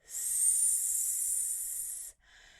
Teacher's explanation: And what I want you to do is put your hand on your throat and say S. Now, when I say that sound, what I notice is that I don't feel my voice at all.